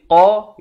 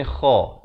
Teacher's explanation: Makhraj ini dipangkal lidah qa. Makhraj huruf ini di hujung kerongkong.